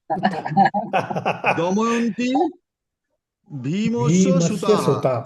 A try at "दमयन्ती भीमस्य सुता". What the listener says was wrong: सुता end with akaranta. Okay, don't do visarga everywhere.